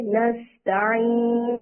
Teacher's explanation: سین کی سیٹی نکالیں خوبصورت سی